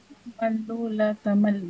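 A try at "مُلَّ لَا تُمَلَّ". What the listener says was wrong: Malla la tamalla. Ya, kalau tasdid harus fathah amarnya, nahinya.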